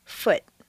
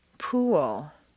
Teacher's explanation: We're contrasting the sound oo, a strong, non-reducible sound, oo, that is made far forward in the mouth, with the lips fully rounded, with the reduced uh sound in the second and fourth columns.